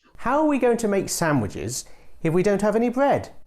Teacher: the bread is old information so you pronounce it with a rising tone